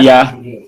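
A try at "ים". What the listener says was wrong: Just close it. Plus final, final mem.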